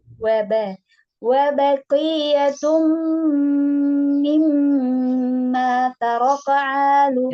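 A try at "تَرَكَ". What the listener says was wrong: Taraka, taraka, bukan taroko. Taraka.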